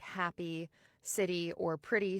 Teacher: When the final vowel in words like happy, city, or pretty sounds like E, as in my accent, that's called happy tensing. In the Transatlantic accent, you use a more neutral eh sound for the ends of those words.